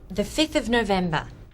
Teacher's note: Often we just write the number followed by the th. The ones with a v sound, 5 and 12, change their v sounds to f